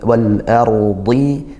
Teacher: dad-nya ditebalkan meskipun dia kasrah, dia sifatnya isti'la dan itbaq, naik pangkal lidahnya sampai tertutup tebalnya itu ya, sampai hampir tertutup rongga mulutnya.